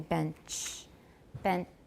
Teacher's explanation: the blade remains close enough to the alveolar ridge to cause turbulence or noise in the airflow